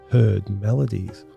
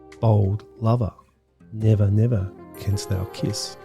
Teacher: a number of spondees which contain two hard rhythmic beats back to back